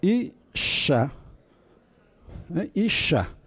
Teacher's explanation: La letra nun es una letra o una consonante que se llama consonante débil y con mucha facilidad se cae. Y para compensar la caída o la desaparición de la letra nun, el hebreo tiene un mecanismo compensatorio que es duplicar el sonido consonántico de la letra siguiente, que es la shin. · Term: dagesh forte